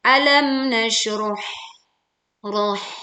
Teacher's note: nasyroh roh dibaca tebal dan huruf H dibaca tipis